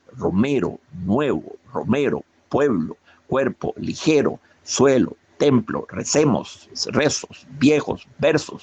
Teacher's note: siempre son palabras graves, es decir, con acento en la penúltima sílaba